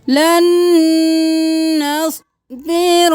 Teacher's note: नून को नून के साथ मिलाएंगे तो गुन्ना होगा, नून पे तशदीद है तो गुन्ना करें